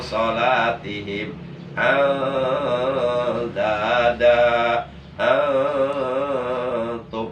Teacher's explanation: Tapi ikhfa kalau diartikan secara harfiah, secara letterlek, ikhfa itu mengandung arti samar. Ya, jadi bunyi nun matinya atau bunyi tanwinnya disamarkan, enggak berbunyi en.